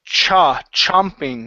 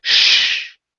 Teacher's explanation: when we pronounce the ch sound it's a puff of air and then we stop it